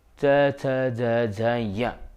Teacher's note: तो ह्रस्व ई, दीर्घ ई और प्लुति, उसके अलावा च वर्ग च छ ज झ य और य और श, इनका उच्चारण स्थान होता है तालु और इन सभी वर्णों को तालव्य वर्ण कहा जाता है।